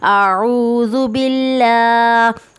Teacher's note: अल्लाह के लाम से पहले ज़ेर होगा तो उसे हम बारीक पढ़ेंगे